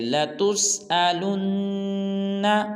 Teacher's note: اس کے بعد آیت نمبر 8 ہے ہمارے لیسن کی، وہ ہے ثم لَتُسْأَلُنَّ، ثم میں غنہ کریں گے، لَتُسْأَلُنَّ کو جب لام کو نون مشدد کے ساتھ ملائیں گے تو بھی غنہ کریں گے